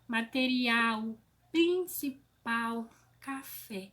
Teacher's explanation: a última sílaba da palavra é a sílaba tônica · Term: oxítona